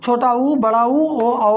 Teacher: इनको बोलने में हमारे दोनों ओठ क्या हो रहे हैं? गोलाकार या वृत्ताकार हो रहा है। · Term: वृत्तमुखी स्वर